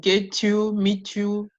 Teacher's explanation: When it ends in a T, we use the ch · get you, meet you, we use the ch sound